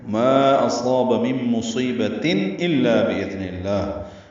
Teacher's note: اصاب میں حمزہ اقصی حلق سے ادا کریں گے، واضح پڑھیں گے، صاد پر پڑھیں گے، الف مدہ ہے یہ بھی پر ہے، 2 حرکات لمبا کریں گے.